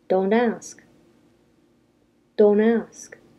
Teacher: The T still disappears sometimes when we say don't before a vowel.